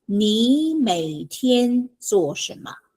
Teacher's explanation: the first 你 it changes to second tone